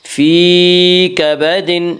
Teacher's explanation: لقد خلقنا الانسان فی یا مدہ وہ یا جو ساکن ہو اس سے پہلے زیر ہو، یا مدہ کو ایک الف کے برابر کھینچ کر پڑھیں گے.